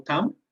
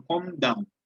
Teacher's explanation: como o com termina com M, então fica vozeado